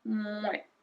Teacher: So we make a really long M in front of it.